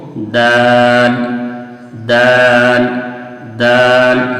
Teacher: تو زبان کی نوک اور ثنایا اولیاء کی جڑ سے کیا نکلتا ہے؟ دال نکلتا ہے · जुबान की नोक और सना औलिया की जड़ तो वही मखरज दाल का भी है। ता और दाल का मखरज सेम है।